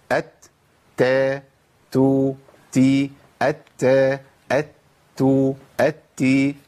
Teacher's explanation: الهمس لا ينفك عن التاء في كل حالاتها، سواء كانت متحركه او ساكنه، لكن بيخف ويبقى ضعيف جدا في حال الحركه